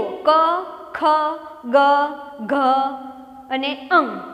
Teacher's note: ક વર્ગનું ઉચ્ચારણ સ્થાન કંઠ્ય એટલે કે કંઠમાંથી બોલાય છે ત્યારે કંઠમાં થડકાર થાય છે.